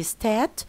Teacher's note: when they are playing in the playground they say stat and of course there is no R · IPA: [staːt]